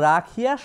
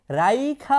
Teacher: পরবর্তী থাকা কোনো স্বরধ্বনি পূর্বেই কোনো ব্যঞ্জন ধ্বনির আগে চলে আসছে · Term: অপিনিহিতি